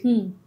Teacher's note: ట అన్నప్పుడు నాలిక ఇలా వెనక్కి తిరిగి అంగిలికి తగులుతుంది